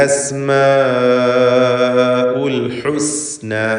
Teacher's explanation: ലഹുൽ അസ്മാഉ. സീൻ സഫീറുള്ള അക്ഷരമാണ്. അസ് അസ് എന്ന് വ്യക്തമായി സീൻ ഉച്ചരിക്കണം.